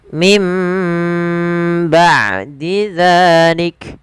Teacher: suara nunnya diganti suara mim. Maka mimba sambil ditahan dua harakat. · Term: iqlab, iklab